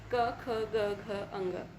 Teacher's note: कंठ और निचली जीभ के स्पर्श से बोले जाने वाले वर्ण